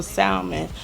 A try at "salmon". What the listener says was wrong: Yo, did you just pronounce the L in salmon?